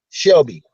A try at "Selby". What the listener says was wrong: Selby. S-E-L-B-Y. There's no H. No, they don't. Selby.